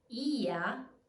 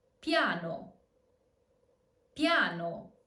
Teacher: The first combination is ya. Ya, not a full I, so it's not ia, but ya, as in piano.